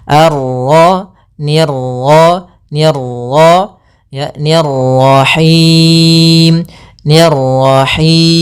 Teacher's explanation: Untuk pantulan dalam huruf ro itu cukup sekali saja karena sifat ro ada sifat takrir yaitu pengulangan tapi hanya sekali.